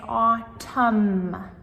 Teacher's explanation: So we hear the M sound, but not the N. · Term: silent N